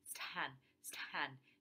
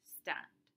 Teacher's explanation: This is as in the second element of a consonant cluster, like in the word stand, because T is not the first element of that complex onset. S is the first element of that complex onset, and therefore you don't get an aspiration. You don't say stand, stand, you say stand. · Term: T without the aspiration